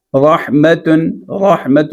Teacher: رحمت میں را پہ زبر ہے اس لیے را کو موٹا پڑھنا ہے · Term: را کی تفخیم